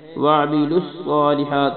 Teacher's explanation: سواد کو موٹا پڑھنا ہے، سواد کو لمبا بھی کرنا ہے